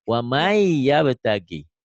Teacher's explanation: Ini idgham biguna itu dengan dengung dan ditahan.